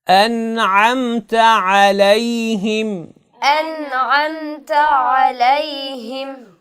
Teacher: عین کو اپنے مخرج سے ادا کرنا ہے، یعنی وسط حلق سے ادا کرنا ہے. انعمت علیہم.